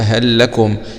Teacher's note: هل لكم بإدغام اللام الأولى في اللام الثانية من الكلمة الثانية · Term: الإدغام